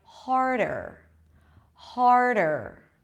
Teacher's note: So you bring the tongue up for the R, har, and then you bring it forward for the D, harder. It's a light D